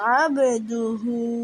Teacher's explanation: আইন কণ্ঠনালীর মধ্যখান থেকে উচ্চারিত হবে